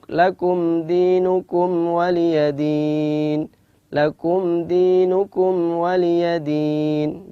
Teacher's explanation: Izhar artinya jelas, mimnya jelas tanpa ada dengung. Syafawi adalah keluar dari dua bibir. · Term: izhar syafawi